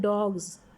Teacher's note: जब स साउंड लगेगी तो उसको हम ज प्रोड्यूस करते हैं